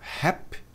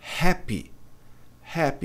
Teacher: o brasileiro tende a não pronunciar o Y com som de i, né, no final das palavras.